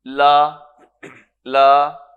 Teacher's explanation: جو حرف مدہ ہے اس پہ ایک مزید مد ہوگی جس کو ہم مد لازم کہتے ہیں